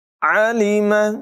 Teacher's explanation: عین کی واضح حلق کے درمیان والے حصے سے نکالیں گے